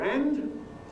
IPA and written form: ænd (hand)